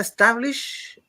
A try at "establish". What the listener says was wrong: tendemos a decir una E antes de la S.